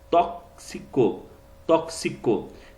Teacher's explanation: esse X, ele tem o som de KS, tem esse som de K e S